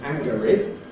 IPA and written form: ˈæŋgəri (angry)